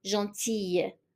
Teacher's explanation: even the L, we pronounce it as a Y